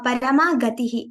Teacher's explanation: Ga is alpa prana there, not mahaprana.